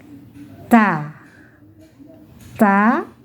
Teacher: ujung lidah menyentuh gusi atas